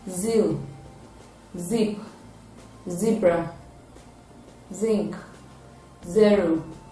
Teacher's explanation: It is a voiced alveolar fricative sound, and its spellings include double Z and Z.